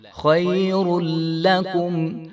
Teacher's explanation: تو ہم نے لام کو موٹا نہیں کرنا، یہاں پہ لام باریک ہے